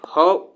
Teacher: उष्म व्यंजन में ह जो हमारा कंठ से उच्चारण होता है